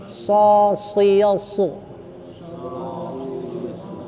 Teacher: So. Ini so ini nggak ada angin sebetulnya. Ya, seakan ya walaupun keluar angin dikit sekali. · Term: huruf so